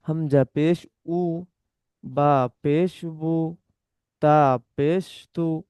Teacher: পেশের আওয়াজ সামনের দিকে যায় আর ঠোঁট গোল হয়।